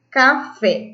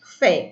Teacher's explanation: Café, qual que é a sílaba tônica? Fé, que é a sílaba mais forte.